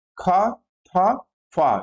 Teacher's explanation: उच्चारण में मुख से अपेक्षाकृत अधिक वायु निर्गमित होती है तथा स्पोट भी अधिक स्पष्ट होता है। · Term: महाप्राण